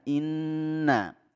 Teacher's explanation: Di ayat pertama, inna a'tainakal kautsar. Inna, ada nun musyaddadah, ini kita baca gunnah ya, didengungkan